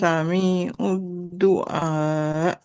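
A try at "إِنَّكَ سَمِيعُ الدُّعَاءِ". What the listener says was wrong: Nah iya, cuman ayatnya panjangkan lagi. Innaka sami'ud du'a.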